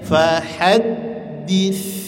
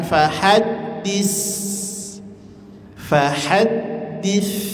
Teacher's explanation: terakhir huruf tsa keluarkan ujung lidahnya dari batas gigi gigit ujung lidahnya jangan fahaddis fahad haddis, tapi tetap dia memiliki sifat hames dan sifat rakhawah. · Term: huruf tha